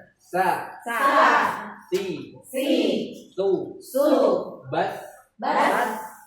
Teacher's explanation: Sa itu posisinya ada di ujung lidah dan sejajar dengan gigi seri. Gigi seri atas.